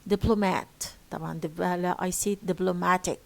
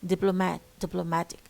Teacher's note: So in the first we have dip, but when we add IC, the stress shifts to mat.